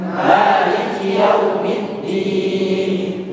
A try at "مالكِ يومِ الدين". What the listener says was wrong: لا تقل مالك يوم الدين، ليست يوم، يوم أسهل من يومي، ولكن في الأصح أنها يومي.